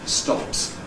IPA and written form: stɒps (stops)